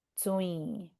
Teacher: We're saying the noon sound that we're dropping into our nose.